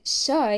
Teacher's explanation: this is a voiceless sound which is to say the vocal chords are not vibrating to produce the sound